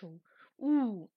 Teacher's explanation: সেটি পশ্চাৎ স্বরধ্বনি, আবার একই সাথে উচ্চ স্বরধ্বনি